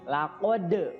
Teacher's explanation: di situ ada dal sukun, jadi harus mantul, ya. Laqad namanya adalah qalqalah sugro, ya, karena di tengah-tengah kalimat namanya qalqalah sugro, ya.